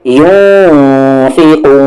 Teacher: نون ساکن کے بعد فا ہے اخفا ہوگا